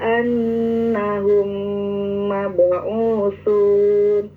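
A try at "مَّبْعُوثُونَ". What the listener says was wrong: Ya, ada makhraj yang ketuker ya. Mab'usun itu jangan mab'usun. Tapi kalau sin sasisu, kalau tasisu, ya makanya seperti tadi bis jangan bis, bis, sinnya itu kurang sofi, artinya kurang berdesis.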